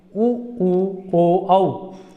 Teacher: आप अपने होठों से बोलने की कोशिश करो तो आप देखेंगे उ ओ और औ। इसमें आपके जो होठ होंगे वो एक गोलाकार होंगे